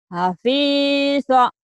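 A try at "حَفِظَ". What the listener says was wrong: Nggak ada yang panjang. Hafilza.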